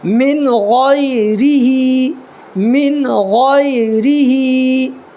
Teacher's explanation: جیسے من غیرہی، یہ را جو ہے را کے نیچے زیر ہے، اس لیے را کو باریک کر کے پڑھیں گے